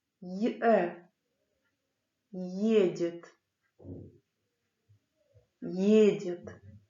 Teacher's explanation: При чтении буквы Е, Ё, Ю, Я дают два звука в начале слова